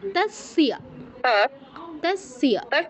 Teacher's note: আপনিও তৈস্য বলেছেন, তাস্য হবে। আর না, তয়ের পরে একটা ই বলছেন না, ইটা হবে না। তস বলুন, তস তস তস বলুন, তাস্যা তাস্যা।